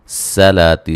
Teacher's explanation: سین کو باریک سیٹی سے